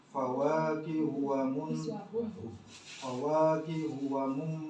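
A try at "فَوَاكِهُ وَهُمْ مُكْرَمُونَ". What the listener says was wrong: Wah. Iya, tadi bunyi wamum. Wamum bacanya wamum. Oke, itu salahnya yang kedua adalah kafnya.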